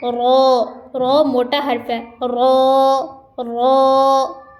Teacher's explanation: زبان ہلکی سی نیچے سے ٹیڑھی ہو کے دانتوں کے ساتھ لگے گی ثنایا اور رباعی کے ساتھ